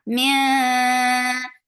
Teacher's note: this ikhfa is light. So keeping your tongue straight.